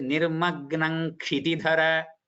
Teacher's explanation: the Dvitva will be on Nga, not on Ka. So it is nirmagnam kshitidhara.